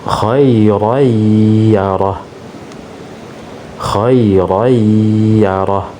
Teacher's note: Nah, di sini ada tanwin bertemu dengan huruf ya. Maka tanwin itu dilebur, dimasukkan ke huruf ya, disertai dengan gunnah.